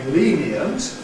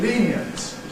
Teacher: we have a kind of choice between saying ‘lenient’ [ˈliːn i ənt] (three syllables) [ˈliːn i ənt] or saying [ˈliːn jənt] (two syllables) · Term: compression